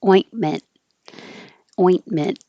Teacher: And then ment. The final T you can also hold in the T position and not say ointment.